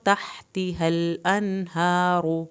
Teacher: تحا کو حلق سے پڑھیں